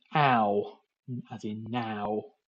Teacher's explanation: starting with that very open um front vowel a and ending up with the U